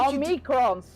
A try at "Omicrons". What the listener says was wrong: Omicrons. There's no N.